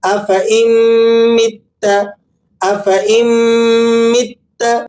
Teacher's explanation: یہاں یہ حمزہ نون سے نہیں، حمزہ کو میم سے جوڑ کر پڑھنا ہے